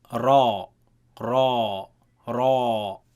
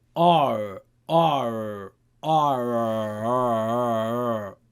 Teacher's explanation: So this is absolutely not the Ra in Arabic. The Ra in Arabic comes in contact with the frontal upper palate.